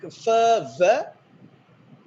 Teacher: labiodentals, the lower lip and upper front teeth